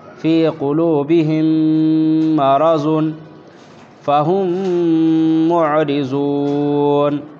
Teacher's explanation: میم ساکن کے بعد میم آئے تو غنہ اور اخفاء کے ساتھ پڑھیں گے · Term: ادغام شفوی